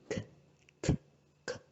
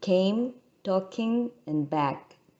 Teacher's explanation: Now we have the velar stops, and the voiceless velar would be k, k, k, which is the sound in came, talking, and back.